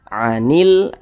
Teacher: alif lam berjumpa dengan huruf ya hukumnya adalah alif lam qamariyah. Sehingga huruf lam ini terbaca dengan jelas.